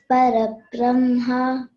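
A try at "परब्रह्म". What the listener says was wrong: There you cannot elongate. Again, it is Parabrahman. Okay, that is why you should say Parabrahma. In the beginning, you can elongate. Here, you cannot elongate. That is, Brahma is Chaturmukha Brahma, the creator. This Brahma is, he is the ultimate, the absolute.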